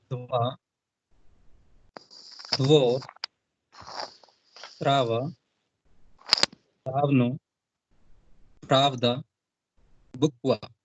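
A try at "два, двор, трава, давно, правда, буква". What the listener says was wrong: वेरी good. ठीक है.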